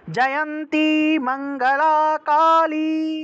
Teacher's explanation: এই যে কালী যে শব্দটা আছে না, দীর্ঘইকার, সেজন্য একটু কালী থেকে একটু দীর্ঘ টান দিবেন, দীর্ঘ রূপে ই বলতে হবে আর কি